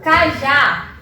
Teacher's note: Sendo que a minha sílaba mais forte é o já. Então, eu tenho uma oxítona, já que minha última sílaba é mais forte, e ela termina em A, ok?